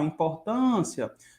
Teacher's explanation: Em importância, a sílaba tônica é a penúltima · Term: paroxítona